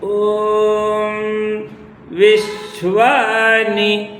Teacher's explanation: ಶ್ವ ನಾನು ಎತ್ತರಿಸಿದೀನಿ ಅದನ್ನ ಗಮನಿಸಿ ಪಾಠ ಮಾಡುವಾಗ ನಾವು ನೀವು ಮಂತ್ರವನ್ನು ಹೇಳಬೇಕಾದರೆ ಹಾಗೆ ಹೇಳಬೇಕು ಅಂದ್ರೆ ಶ್ವ ಮೇಲೆ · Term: ಸ್ವರಿತ